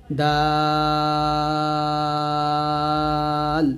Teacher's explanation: উচ্চারণ করতে হবে কিভাবে দেখুন এখানে দালের উচ্চারণটা হবে যেবার আগা সামনে উপরের দুই দাঁতের গোড়ার সঙ্গে লাগিয়ে দালটা উচ্চারণ করতে হবে পাতলা করে